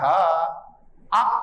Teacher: ఆ క హ విసర్గతో కూడినవన్నీ కంఠం నుంచి పుడతాయి.